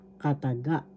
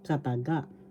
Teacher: First syllable ka, second syllable ta, third syllable ga. Kataga. The accent is in the third syllable